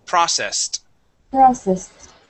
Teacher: that ED at the end will make a T sound